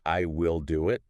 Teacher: If someone just says will emphatically, like I will do it, they stress the word will.